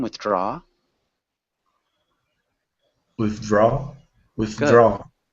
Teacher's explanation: it's just the intonation is on the second syllable